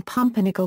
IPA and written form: ˈpʌmpərnɪkəl (Pumpernickel)